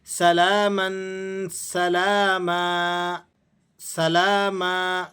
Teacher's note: 2 زبر کی تنوین وقف کی حالت میں الف سے تبدیل ہو جاتی ہے